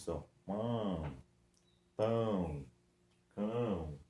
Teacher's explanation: saiu um ar também pelo nariz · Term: nasais